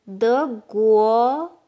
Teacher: 国 is a country, and it's second tone